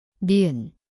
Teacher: Znie ako N. Miesto je špička jazyka, horné ďasno.